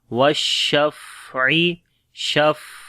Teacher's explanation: فا کے اوپر صفت ہمس ہوگا، والشفعی، شف، ٹھیک ہے، سانس جاری ہوتا ہے ، والشفعی، ان کو گلے کے درمیان والے حصے سے پڑھیں